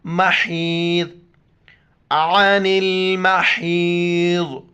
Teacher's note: ضاد موٹے الفاظ میں سے موٹا کر کے پڑھیں گے۔